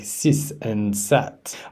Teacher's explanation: a learner constantly uh pronounces th sounds as s like sis and sat